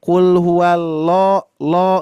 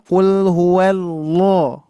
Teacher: Jadi pangkal lidahnya tidak diangkat. Jadi cuman qul huwallahu itu ya. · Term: tidak ditebalkan